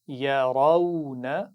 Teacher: آخر میں نون کو لمبا نہیں کریں گے، نون پر زبر ہے